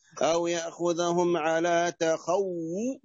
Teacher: الواو مضمومة فنضم فيها الشفتين